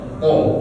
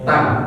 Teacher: Po itu dia agak tebal, beda ya antara bunyi ta sama po. Po dia memang agak tebal bunyinya daripada huruf ta.